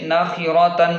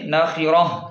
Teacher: اس تا کو وقف کی حالت میں ہا کے ساتھ تبدیل کر دیں گے